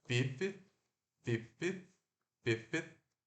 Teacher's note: Só que esse F e esse TH é muito próximo na nossa boca, na nossa língua. É só o F, ele é fricativo lábio dental, né? Então, ó, desvozeado. E o TH, ele é lábio dental, não, ele é dental, fricativo, desvozeado também.